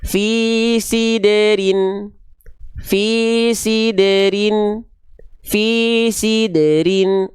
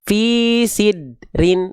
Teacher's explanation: Yang kedua kurang tepat karena dalnya tidak diqqalqalahkan. Betul-betul tidak dipantulkan.